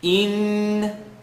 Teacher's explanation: let the sound vibrate in the nasal cavity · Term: noon shadda